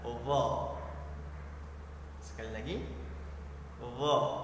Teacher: Huruf itsbat ini adalah huruf yang dimana lidah kita melengkung dan menutupi langit-langit sehingga bunyinya besar dan menebal